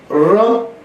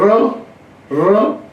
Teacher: र बोलने में जीवा जो है, आपकी जीभ जो है वो कंपन करते हुए ऊपर जा रही है,